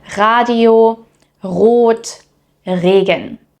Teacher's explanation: In standard German, the r is typically pronounced at the back of the throat. That's the version many learners first hear and also struggle with, like for example, in words like Radio, Rot, Regen. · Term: German r, German R